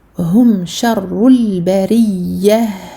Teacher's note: Donc on a ra mufakhama et en plus de ça doublé du fait de la shadda et on passe au lam et ensuite ra muraqqaqa ya doublé pareil à cause de la shadda et on termine avec un ha pour laquelle il y a écoulement du son rakhawah. Donc on donne du temps à ce ha.